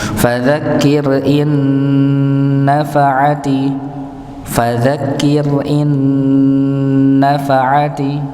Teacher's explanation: maka dibaca dengung nggih, ditahan terlebih dahulu, jangan terburu-buru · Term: idgham bi gunnah